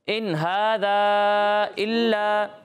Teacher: ला 1 अलिफ के बराबर खींचना है